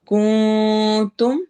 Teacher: نون کے آواز کو چھپائیں گے، اخفا ہو رہا ہے